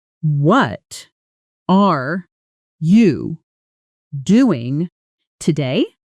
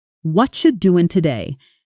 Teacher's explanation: spoken slowly, word by word. It sounds exactly like it looks, but spoken naturally and quickly, it often sounds like watcha doing today. The what are you collapses into something closer to watcha and the stress lands hard on certain syllables while others almost disappear. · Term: whatcha